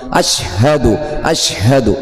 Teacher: തൊണ്ടയുടെ താഴെ അറ്റത്തു നിന്നാണല്ലോ ഹാ വരുന്നത് · നാവിന്റെ മധ്യവും മേലെ അണ്ണാക്കുമാണ് ഷീന്